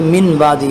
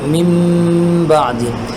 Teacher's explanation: میم بعدی، یہاں پر بھی اصل میں من بعدی ہے، لیکن نون ساکن کے بعد با آیا ہوا ہے تو ہم نے نون ساکن کو میم سے تبدیل کر کے پڑھ لیا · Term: اقلاب